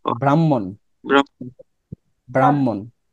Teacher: এটাকে বাংলা পাবো হচ্ছে হ যোগ ম, কিন্তু উচ্চারিত রূপটা হচ্ছে ম যোগ হ।